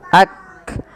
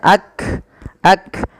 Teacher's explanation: tertahannya suara dan Hamas itu mengalirnya nafas nah sehingga ketika melafalkan Kaf itu yang pertama adalah sifat syiddahnya dulu tertahannya suara